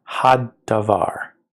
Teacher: we now just have a doubling of that hard D